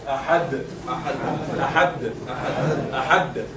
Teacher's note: It is sakina. If we are going to find the dal not inside the word, but it is at the end, and we are going to stop because we stop on sakin, in this case, the qalqala would be a little bit stronger. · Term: dal muqalqala